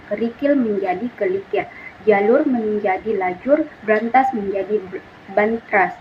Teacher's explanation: perubahan urutan bunyi fonemis pada suatu kata sehingga menjadi dua bentuk kata yang bersaing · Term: metatesis